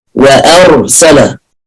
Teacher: وأرسل، الواو مرققة، الهمزة مرققة